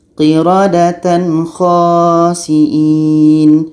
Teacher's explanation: Jadi tanwin dan kha harus jelas, qiradatan khasi'in. Tidak boleh ada senandung karena aturannya adalah izhar halqi, qiradatan, tan, kho, qiradatan khasi'in .